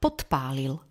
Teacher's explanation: D je znelá párová, P je neznelá párová a tak sa prvá z nich D zmení na svoj neznelý pár T. Vnútri slova.